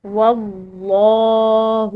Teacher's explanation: یہاں پر لفظ اللہ کی لام موٹی اور پر ادا کی جائے گی